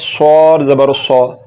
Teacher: اور جب صاد کو پڑھیں گے تو صاد کو بھی سیٹی کے ساتھ پڑھیں گے